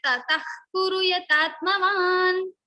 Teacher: So it begins with ka. So after visarga, you are having ka. So ka means jivva mulya sound will come in the place of visarga.